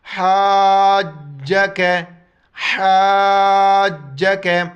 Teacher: دیکھیں کاؤنٹنگ دیکھ لیں آپ، حا الف جی مد زبر، حا الف جی مد زبر، حا الف جی مد زبر حاج، جیم زبر جے، حاج، کاف زبر کے، حاجک، حا کو گلے سے ادا کرنا ہے، مد کو کھینچنا ہے، اور جیم کو سختی سے پڑھنا ہے، اس کے اوپر شد ہے، حاجک، حاجک، وقفاً حاجک۔